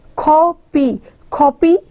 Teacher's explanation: we are stressing the first syllable and we are not stressing the second syllable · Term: stressed syllable